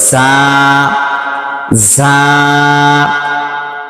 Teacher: ঝা হলো জিহ্বার মধ্যখান থেকে একটু সামনে আগাইলে তার উপরে চাপ দিয়া তার বরাবর উপরে তালের সঙ্গে লাগে